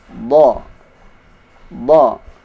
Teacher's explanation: Sisi lidah atau tepi lidah menempel pada gigi geraham kiri atas atau dua-duanya. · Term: huruf dhad